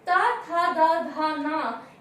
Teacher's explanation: जब हम ता, था, दा, धा, ना ये वर्ण बोलते हैं तो हमारे दंत आपस में मिलते हैं। उच्चारण के दौरान हमारे दंत आपस में मिलते हैं, इसलिए इसका उच्चारण स्थान होगा दंत।